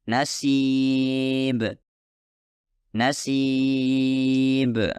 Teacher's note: tidak cukup mengangkat bagian belakang lidah sehingga menimbulkan suara Sin